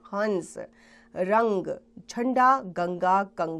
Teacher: अंग की ध्वनि को अनुस्वार कहा जाता है। इसका उच्चारण नाक से किया जाता है।